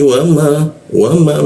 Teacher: mim mim bibir bertemu bibir ya